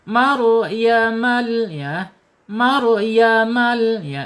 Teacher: Dua getarannya cukup tidak boleh banyak-banyak